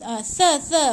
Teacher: Hujung lidah di antara 2 gigi. Bunyikan tha. Okey, gigit hujung lidah di antara gigi tu.